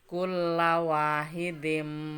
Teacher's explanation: Ada dal di tanwin ketemu mem, maka idgham bigunah, maka harus masuk dengan dengung.